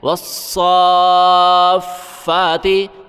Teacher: فا کے اوپر کھڑا ہے ایک الف کی مقدار فا کو کھینچنا ہے